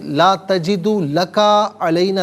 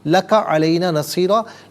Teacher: لکا میں جو کاف ہے اس کو بغیر کھینچے پڑھیں گے